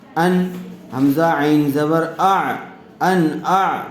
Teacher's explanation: نون ساکن کے بعد حروف حلقی میں سے حمزہ آیا ہوا ہے، اس لیے بغیر غننے کے جلد اظہار کر کے پڑھیں گے